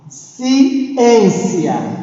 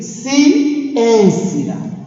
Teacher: Esta é a sílaba tônica. Está no em, porque a sílaba em é aquela que eu pronunciei com mais força ou mais intensidade.